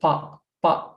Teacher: First one is pa without making aspiration from our mouth after the pa.